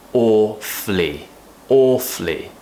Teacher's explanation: some people will not pronounce the schwa sound like I did just then and it would be awfully awfully